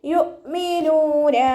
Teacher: യുഅ്മിനൂന അതുപോലെ ഓതരുത്. യുഅ്മിനൂന നൂനിൻ്റെ കൂടെ വൗമദ് വന്നു, 2 കൗണ്ട് നീട്ടിക്കൊടുക്കുക.